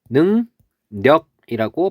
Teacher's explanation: 그랬을 때 여기 이응하고 리을이 만나서 이응하고 리을이 만나서 이응하고 니은이 되는 것. 이거를 우리는 비음아라고 부릅니다.